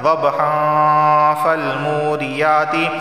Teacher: دیکھیں یہاں گنہ کیوں کر رہا ہوں میں، ضبحا فالموریات، کیونکہ تنوین کے بعد فا گیا ہے، اور تنوین کے بعد جب فا آئے گا تو وہاں اخفا والا گنہ ہوتا ہے